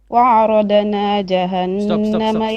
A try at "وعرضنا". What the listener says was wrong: وعرضنا ضاد, don't bounce it, don't make قلقلة.